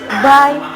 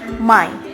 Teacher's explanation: These consonant sounds are produced by putting two lips together. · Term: bilabial sounds